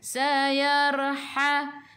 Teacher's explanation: Sayar masuk ke dalam ra ada sukun. Sebelum ra baris atas kena baca tebal, lidah naik ke atas.